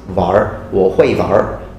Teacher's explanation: sometimes they even change the w sound into a v sound, so it becomes 玩,我会玩.